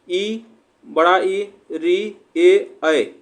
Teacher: जिह्वा जो होती है हमारी, उसके जो आगे वाले भाग से उच्चारण जो होते हैं वो होते हैं हमारे अग्रस्वर